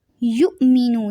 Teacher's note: یہاں پہ جھٹکا دیں گے کیونکہ حمزہ ساکن ہے